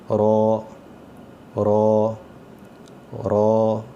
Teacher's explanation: رو اس کی آواز موٹی آئے گی اور را میں آواز نارمل نکلتی ہے جیسے ہم اردو میں پڑھتے ہیں, تو اس کی آواز موٹی آنی چاہیے. رو زبان اوپر سخت تالو کے ساتھ لگ کے تو واپس ہو جائے گی, اور آواز اس کی گلے سے ہم نے موٹی کر کے پڑھنا ہے. اس کو جس طرح ایسے پڑھنا ہے کہ رو رو رو.